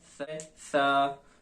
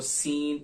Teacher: पहला है सा, इसके अंदर आपने सीटी की आवाज नहीं निकालनी, और सीन इसके अंदर आपने सीटी की आवाज निकालनी है